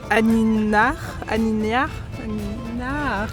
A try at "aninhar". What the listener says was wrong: Alors, uma pequena pista, o NH faz o som NH. Aqui a principal dificuldade foi o NH, que em português faz o som NH.